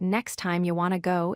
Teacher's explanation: Notice how the T in next drops, the T in want drops, and you becomes ya. This shows how multiple elisions work together in a single sentence.